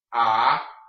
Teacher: Now this one's very important because remember, your H is always silent in the beginning of a Spanish word. This is not hablemos or hablamos, it is hablamos.